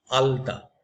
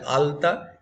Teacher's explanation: ল উচ্চারণ করতে গেলে জিভটা গিয়ে দাঁতে ঠেকে যাচ্ছে